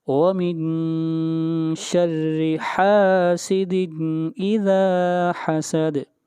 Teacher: آگے چلیے، آخری آیت، وَمِن شَرِّ، نون کے اوپر پھر اخفا ہوگا، وَمِن شَرِّ حَاسِدٍ حَاسِدٍ، حَاسِدٍ، میرے بات پڑھیے، وَمِن شَرِّ حَاسِدٍ وَمِن شَرِّ حَاسِدٍ إِذَا حَسَدَ إِذَا حَسَدَ، یہاں پر حاسدین کے اوپر اخفا نہیں ہوگا بلکہ اظہار ہوگا، اس لیے کہ تنوین کے بعد حروف حلقی میں سے حمزہ آ رہا ہے۔